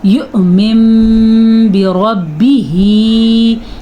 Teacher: جب کبھی قرآن مجید میں نون ساکن ہو یا تنوین ہو اور اس کے بعد با آ جائے تو وہاں پہ نون یا تنوین کو چھوٹے سے میم میں بدل دیتے ہیں، پھر نون نہیں پڑھا جاتا بلکہ یہ میم پڑھا جاتا ہے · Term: اقلاب